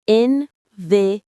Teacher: The stress is on the third syllable, te.